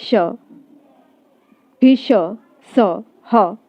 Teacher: बच्चों, बोलने से ही पता चल जाता है कि ये ऊष्म व्यंजन है, क्योंकि इनके उच्चारण में जैसे हम बोले श, भी श, स, ह, तो ऐसा महसूस हो रहा है कि हवा रगड़ खा करके मुख से बाहर निकल रही है।